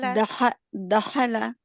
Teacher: दाल हरफे कलकला है और ये मुतहरक है, तो इस पर असूले कलकला नहीं हो रहा